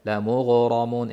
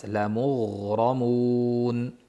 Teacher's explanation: G'oyinni ham ro'xavasini bildirib sirg'altirib o'tamiz. Lamughramun bo'lib qalqala bo'lib qolish kuchli ehtimoli.